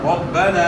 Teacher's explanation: الف سے پہلے زبر ہے تو زبر کو تھوڑا کھینچیں گے، الف ادا ہوگا. الف مد ہے، الف سے پہلے جو زبر ہو اس کو الف مد کہا جاتا ہے اور زبر کو کھینچنا ہوتا ہے. · را کے اوپر زبر ہے تو را کو اپنے موٹا ادا کرنا ہے. با کے اوپر شد ہے، شد کو اپنے خوب جماؤں کے ساتھ ادا کرنا ہے.